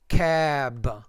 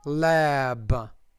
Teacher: the vowel before B should be longer